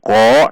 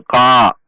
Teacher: Qaf fathah bertemu alif mad tabi'i dua ketuk. Perhatikan tidak dengan membulatkan bibir, bukan dengan ko namun ka, menaikkan pangkal lidah.